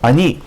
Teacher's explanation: Instead of ani, it's a shorter A.